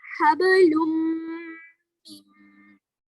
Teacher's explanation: That means I have did gunna and I have completely merged noon sakin into mim